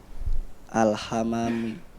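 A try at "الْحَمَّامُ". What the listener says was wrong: Memnya ditasdid. Al-hammamu.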